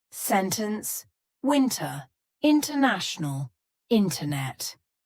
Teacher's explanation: when we're speaking quickly completely cut out the T · In these words, the T is just gone. So you're going to hear native speakers, when we're speaking quickly, completely cut out that T. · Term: glottal T